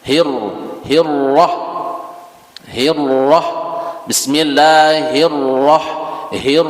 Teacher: Sama di situ ada ro sukun, terus setelahnya berbaris fathah, itu tebal atau bacaannya tafkhim. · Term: ro tafkhim